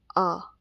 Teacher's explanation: Open vowel के बारे में। जब मुख का आकार पूरा खुला हो और जीभ अपने स्थान पर निष्क्रिय पड़ी हो। उन्हें हम विवृत स्वर कहते हैं।